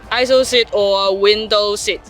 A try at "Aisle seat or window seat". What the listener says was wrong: Oh, very close. Aisle. S is silent.